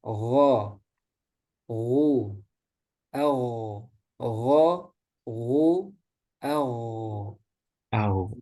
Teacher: kalau untuk fathah domahnya kemudian sukun. Nah itu kerasa tebalnya.